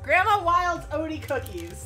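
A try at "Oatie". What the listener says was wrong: O-T. Okay, you pronounced it O-D. O-T. O-A-T-Y.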